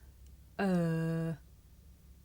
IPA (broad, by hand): ɜː